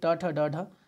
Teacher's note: ट ठ ड ढ ये मूर्धा से होता है